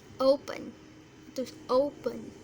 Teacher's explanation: mengucapkan open ini penekanannya di suku pertama